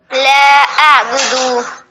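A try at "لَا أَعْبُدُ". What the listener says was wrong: ہاں لیکن دال کو نہ کھینچیں. دال کو نہ کھینچیں. لا اعبد ما تعبدون. بدو یعنی با پر صرف پیش ہے، دال پر بھی صرف پیش ہے، تو دونوں کو نہ کھینچیں.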